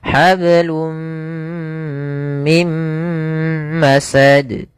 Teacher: Maka di sini awalnya hablun karena ketemu mim masuk ke mim tanwinnya hilang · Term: idgam bighunah